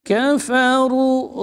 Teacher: Kaf syiddah ya fa huruf hammas dan khawah kafaru. Ru tebal panjang dua harakat.